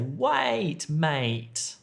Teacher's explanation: that's a very long a sound